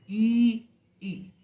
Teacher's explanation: तो इसमें भी आप देखें कि वही फ्रंट ऑफ द टंग है, लेकिन इसमें आप जब छोटी ई जब हम प्रोनाउंस कर रहे हैं, तो वो हम इतने क्लोज नहीं आ रहे हैं, बल्कि थोड़ा सा दूर हो जाते हैं, जैसे ई। तो ई में वी आर हाफ क्लोज, हम उसके क्लोज से थोड़ी सी आधी दूर हैं, इसलिए ये क्या है, हाफ क्लोज वोवेल है ई।